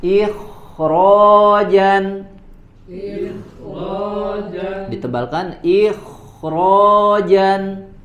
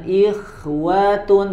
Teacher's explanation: huruf kho sukun sebelumnya kasroh dibaca tipis, akan tetapi dibaca tebal ketika di depan huruf kho terdapat huruf ro ya. Contoh pada kata ikhrojan, ditebalkan ikhrojan.